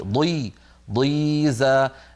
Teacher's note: مع كونها مكسوره بقيت الضاد صوتها قوي